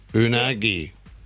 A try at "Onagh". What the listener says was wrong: Surely you don't say the G.